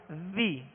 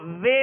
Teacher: زیر کو جب ادا کریں گے تو آواز کو گرا کر ادا کریں گے